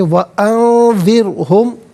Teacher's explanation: نون ساکن کے بعد ذال حرف اخفاء آ رہا ہے تو نون ساکن کو اخفاء کے ساتھ پڑھیں گے، یعنی یہاں اخفاء کہتے ہیں ناک میں آواز لے جا کر گنگنانا۔